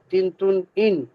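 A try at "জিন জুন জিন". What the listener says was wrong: তিন তুন না, জিন, জুন, আইন।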